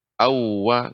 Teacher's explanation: Adapun waw yang bertasydid ini tidak panjang.